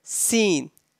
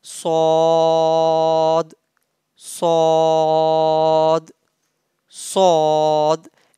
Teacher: the difference between the sound of sin and sword is sword pronounced boldly and heavily sword saw from the tip of the tongue and inner edge